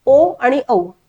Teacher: कंठ आणि ओठ या दोघांचा वापर करून होणारे आहेत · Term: कंठोष्ठ